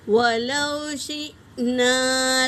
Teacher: حمزہ ساکنہ ہے تو جھٹکے کے ساتھ پڑھیں گے، الف مدہ بھی ادا کریں گے۔